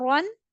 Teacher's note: Ra double fatha run. There will be no gunna, but ra will be read with full mouth.